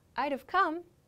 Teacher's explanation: i reduce wood to d and i make the v sound for have so i would have come becomes i'd have come but i